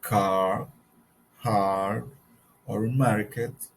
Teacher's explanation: English when Earth comes after a vowel in the same salable for example as in car hard or Market the r is not pronounced